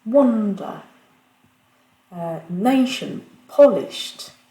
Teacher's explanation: mots qui sont accentués sur la première syllabe